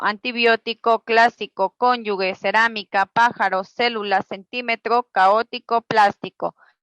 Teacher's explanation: las palabras esdrújulas llevan el acento o mayor fuerza de voz en la antepenúltima sílaba